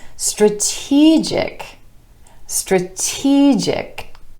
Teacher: And our stress shifts to the e vowel sound right before our suffix,